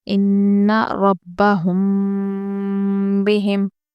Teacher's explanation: تشدید والی نون کو ہم غنے کے ساتھ پڑھیں گے